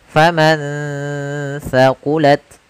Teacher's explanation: ada nun sukun bertemu dengan huruf tsa. Maka nunnya disamarkan ke huruf tsa. Faman tsaqulat sambil ditahan gunahnya.